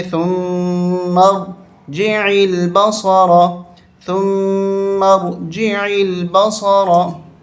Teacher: मीम को रा के साथ मिलाएंगे और यहाँ पर तशदीद है मीम के ऊपर, गुन्ना करेंगे।